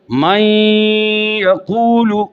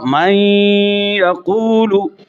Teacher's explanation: اب آپ دیکھیے کہ ادغام کی تعریف تھی کہ نون پہلا حرف ساکن ہو، دوسرا متحرک ہو، دونوں ایک ساتھ مشدد ادا ہوں، تو لہذا نون اور یا دونوں ایک ساتھ پڑھے جا رہے ہیں، تو نون یا میں داخل ہوا تو ادغام مع الغنہ ہوا